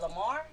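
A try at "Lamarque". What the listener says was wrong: Lamarck with a Q. Yeah, make sure you put that Q in there.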